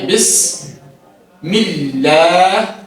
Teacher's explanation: تو جب اللہ کے نام سے پہلے زیر آئے تو ہم نے اس کو باریک پڑھا